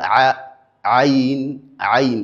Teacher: Nous avons la lettre ain ain ain l'erreur qui est effectué par beaucoup d'apprenants, c'est le fait que il implique la cavité naszale dans la prononciation de cette lettre. La lettre aine a pour lieu d'articulation l'épiglotte. Donc au milieu de la gorge, on est censé à dire a ain ain sans pour autant impliquer la cavité nazale. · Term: La lettre Aïn